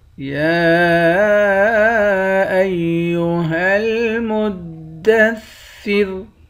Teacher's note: کھڑا زبر کے اوپر مد ہے۔ اس مد کو 3 الف کے مقدار کھینچ کر پڑھیں گے۔ آخر میں را ہے، اس را پر جب وقف کریں گے تو را کو باریک پڑھیں گے۔